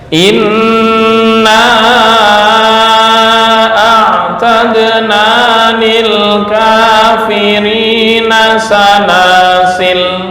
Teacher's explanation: Alif tetap dalam penulisan, tetapi dihadzaf atau dibuang dalam pengucapan, dan baik wasal maupun wakof. Kedua cara, wakof maupun wasal tetap dibaca pendek, seolah-olah alifnya nggak ada.